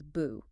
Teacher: So boo changes to a second tone, a rising tone. It becomes bu. · normally. But if it comes right before another fourth tone, saying 2 sharp drops in a row is awkward, so bu changes to a second tone, a rising tone, it becomes bu.